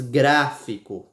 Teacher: ela começa bem forte e termina menos forte com menos Intensidade